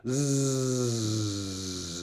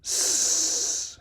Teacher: Technically, we say it's voiced, whereas the S sound, s, is just a pure hiss with no laryngeal content, no vibration down here.